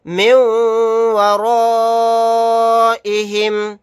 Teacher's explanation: یہاں پر الف مدہ کے بعد حمزہ اسی کلمے میں ہے تو یہاں پر مد متصل کا قاعدہ ہوگا. اس مد کو 4 الف کی مقدار کھینچ کر پڑھیں گے.